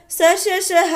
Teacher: क्यों ऊष्म संघर्षी है? क्योंकि जब हम इनको बोलते हैं तो हमारे मुंह से रगड़ खाते हुए हवा जो है वो बाहर निकलती है एक उष्मा के रूप में। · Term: ऊष्म संघर्षी व्यंजन